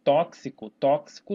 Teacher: Isso tem um som de KS, então esse X aqui é um dífono